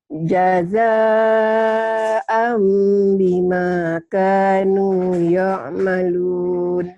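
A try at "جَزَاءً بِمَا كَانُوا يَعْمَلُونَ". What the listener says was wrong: Jangan yo ya, ya. yo, ya'malun. Jazaan bima kanu ya'malun.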